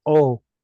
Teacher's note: The vav here at the end of the word is a cholam vav, so the whole thing is a vowel. The aleph makes that glottal stop sound with an o attached to it. So it's simply o.